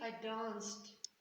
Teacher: when you pronounce the past tense regular verbs, you will hear that sometimes you will say I danced, and it will sound like a T.